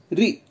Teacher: जब हम रा में छोटी ई की मात्रा री बोलते हैं उस समय जिह्वा ऊपर के भाग से सिर्फ एक बार घर्षण करती है, री। लेकिन जब हम री बोलते हैं उस समय जिह्वा कई बार घर्षण करती है, री।